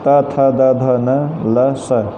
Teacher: इन वर्णों के उच्चारण में दांतों की महत्वपूर्ण भूमिका होती है